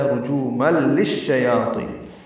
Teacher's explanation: بعد لام آنے کی وجہ سے ادغام کامل ہے، رجوما للشیاطین، لام کو شین سے ملائیں گے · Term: ادغام شمسی